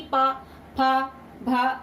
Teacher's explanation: इनको जब भी हम प्रोनाउंसिएशन करते हैं तो हमारे दोनों होंठ आपस में टकरा जाते हैं। ओके, हमारी जबान नहीं टकराती, ओनली हमारे होंठ टकराते हैं, जैसे कि पा, फा, भा, इस तरीके से हम बोलते हैं। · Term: पावर